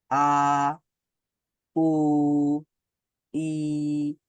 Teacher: আ বলার সময় জিহ্বাটা সমান থাকছে উ বলার সময় গোল গোল হয়ে যাচ্ছে ঠোঁট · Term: মাদ